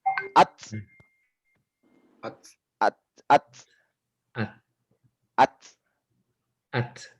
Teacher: Pada saat pengeluaran dia terasa anginnya, pada saat disukunkan lebih terasa lagi. Huruf-huruf hamas ini semua jika disukunkan terasa.